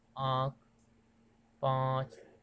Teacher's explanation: कहते हैं बोलचाल की भाषा में इसको चंद्र बिंदी कहते हैं चंद्र बिंदी के उच्चारण में बिंदी की अपेक्षा आधा समय लगता है